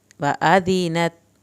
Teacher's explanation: ज़ाल को नरमी से पढ़ना है, अलिफ की ज़बर को लंबा नहीं करना